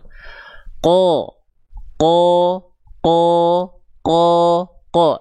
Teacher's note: vokal yang kita dengar seperti O ini ya, yang terdapat pada huruf tebal itu dihasilkan sekali lagi karena pangkal lidah naik